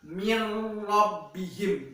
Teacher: di mana jikalau secara penulisannya itu ada huruf nun yang bertasdid, tetapi secara kita pengucapannya atau kita mendengarkannya itu yang benar adalah mirrbihim seperti huruf nunnya tidak terbaca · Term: idgham bila ghunah